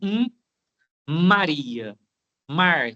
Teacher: Quando eu vou falar Maria, eu começo com o nariz. Um Maria. Antes de abrir a boca, o nariz fala primeiro. · Mesmo que for rapidamente, esse M passa pelo nasal. Você faz um jogo de ar na sua articulação de começar pelo nariz. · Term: nasais, fonemas nasais